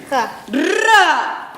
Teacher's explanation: Et l'air se prononce en donnant du bout de la langue jusqu'au haut du palais, de sorte que l'air fait une manière de tremblement